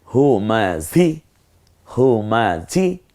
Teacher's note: এই হটা কণ্ঠনালীতে ছেড়ে দিয়ে ঝটা একটু ঝিঝি আওয়াজে হবে